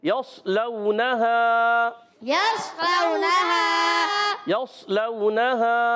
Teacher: صاد کو موٹا رکھنا ہے اور یا کو صاد سے ملانا ہے